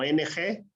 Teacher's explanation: te das cuenta como en español se quedó como ong pero el sonido es de una n velar que se aproxima al sonido de ng por ejemplo en español tenemos la palabra mango se acerca mango